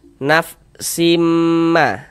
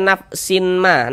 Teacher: Jadi di bagian simnya itu suaranya itu kita tahan, kita panjangkan sejenak, kita panjangkan sebentar, kita ghunahkan. sepanjang dua harakat. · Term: idgham bighunah